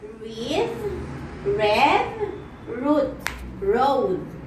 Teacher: Manner of articulation is retroflex approximant,